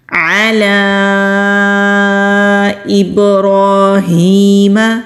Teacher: عین حلق سے نکالیں گے، لام کے پر مد ہے، لام کو کھینچیں گے۔